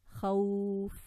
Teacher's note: Not too much of the khawf where the lips are really rounded so much and there's so much emphasis on the waw. It's nice and smooth. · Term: al-leen